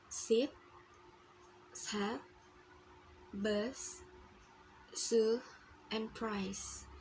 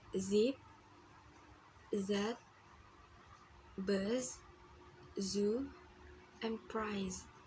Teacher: It is a short sound. And the z is voiced sound. The vocal cords move to make this sound. It is a little bit longer than the s sound.